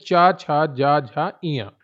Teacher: चा वर्ग आता है तालु में, मुंह का ऊपरी भाग। जब जीभ हमारी ऊपर लगती है और हवा निकलती है तो चा, छा, जा, झा, इया।